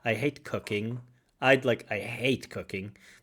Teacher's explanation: I'd like to see maybe more stress on hate than cooking